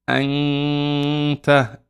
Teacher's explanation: We just hide the noon and say anta, and there's a nasal sound. The ghunna is the nasal sound. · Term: ikhfa